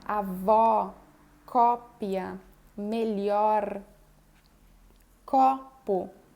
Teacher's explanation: O aberto é também com a boca bem aberta, se aproxima do A